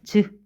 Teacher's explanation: 머무르다가 터트리는데 터트릴 때 크게 터트리는 것이 아니라 목청을 얇게 내서 나는 소리예요. 즈 이렇게 되죠. 그렇게 돼서 외울 때 어떻게 외우느냐? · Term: 파찰음